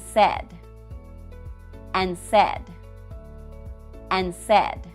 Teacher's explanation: notice I did not pronounce the d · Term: dropped D